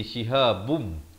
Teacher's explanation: halqi jadi di sini jadi Idgham Bighunnah daripada shihabun jadi shihabbum terus masuk ke dalam mim dan didengungkan dua harakat